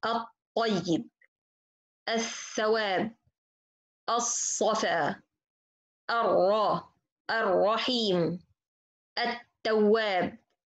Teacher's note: So the lam in this case I don't pronounce at all. The rules of it is al-idgham.